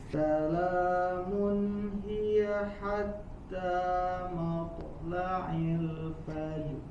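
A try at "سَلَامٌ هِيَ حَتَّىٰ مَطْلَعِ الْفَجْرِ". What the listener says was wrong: To-nya jelaskan. Qalqalah matla'il fajr.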